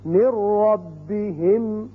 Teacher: را کی مثال نون ساکن کے بعد اب نون نہیں پڑھا جائے گا، میم را سے ملے گا